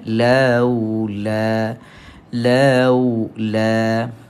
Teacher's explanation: Kemudian la pula alif tak berbaris. Kita jumpa dengan ma asli. Panjangnya dengan kadar 2 harakat.